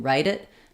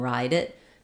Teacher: So the difference between write and ride, if I'm just saying them by themselves, is that write is going to be very short, ride is going to be longer.